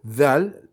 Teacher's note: Zal, comme un Z, la langue entre les dents.